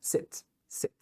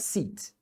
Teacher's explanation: É um I bem curtinho, bem parecido com um E fechado. Bem curto.